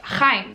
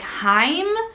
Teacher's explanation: Outside of Israel, the ch sound would probably be lost and it would be more like Haim.